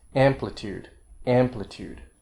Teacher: have kind of a second level or secondary stress like amplitude the amp is the main stress the uh is a long vowel so it gets a stress too but a second level stress